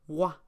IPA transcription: wa